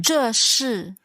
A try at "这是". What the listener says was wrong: Right, so the sh is more kind of forward in your mouth. Sh. 这是. So 这是 and the sh is also the same.